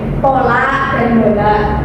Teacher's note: Seperti contoh pada bunyi P dan B adalah bunyi hambatan bilabial